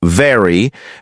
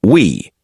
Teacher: ensure that your lips vibrate for a V, as in very, and round for W, as in we